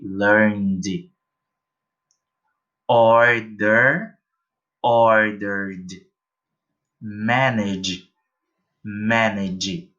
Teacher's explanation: eu vou pronunciar esse meu ED com som somente de D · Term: som de D